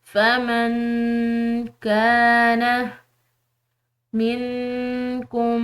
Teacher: نون ساکن کے بعد کاف ہے جو کہ حروف اخفاء میں سے ہے تو اس نون ساکن پر بھی اخفاء کریں گے